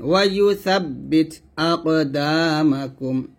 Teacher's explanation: এখানে সা উচ্চারণ করতে গেলে যেন সাব্বিত মানে সিনের মতো না হয়ে যায়, সাটা জিহ্বার আগা উপর দাঁতের আগার সাথে লাগিয়ে পাতলা উচ্চারণ করবেন